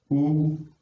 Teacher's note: उ का उच्चारण स्थान क्या होता है? ओष्ठ होता है।